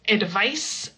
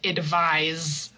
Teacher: the noun advice uses the s sound and the verb to advise someone uses the z sound